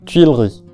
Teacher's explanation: al estar seguida de la vocal I, este sonido U se transforma en una semivocal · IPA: [tɥilˈʁi]